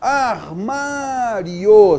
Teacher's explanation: semivogal mais vogal, o som cresce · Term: ditongo crescente